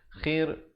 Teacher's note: Khir, rohnya menjadi nipis. Jangan baca akhir.